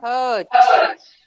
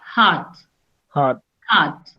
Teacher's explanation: Sometimes what happens when you say I have a pain in my heart, so it sounds, you are saying HURT, so Hurt. it is, again, it is heart, no r sound